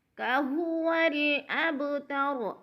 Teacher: اب کی با کو ہلا کر پڑھیں گے کیونکہ با کے اوپر قلقلہ ہو رہا ہے